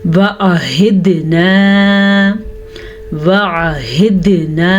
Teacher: दाल पे कलकला करना है, हाँ के मखरज को वाज़ेह करके पढ़ना है,